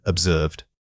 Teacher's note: This word is often mispronounced because people drop the final two sound. Make sure you articulate that slight puff of air at the end. The middle vowel needs to be drawn out slightly for maximum clarity.